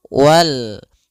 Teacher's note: Yaitu alif lam yang ditulis dan dibaca. Alif lam alif lam qamariyah itu lamnya dibaca dengan jelas suara lamnya